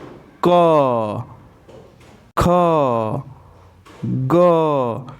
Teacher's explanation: जब हम क, ख, ग का उच्चारण कर रहे हैं तो हमारे कंठ पे जोर महसूस हो रहा है, जोर पड़ रहा है।